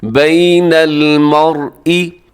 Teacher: مرئی اس میں را موٹا پڑھا جائے گا کیونکہ را ساکن ہے